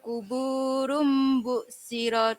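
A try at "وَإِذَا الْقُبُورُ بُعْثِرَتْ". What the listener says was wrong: Sa lagi. Bukan shin tapi sa.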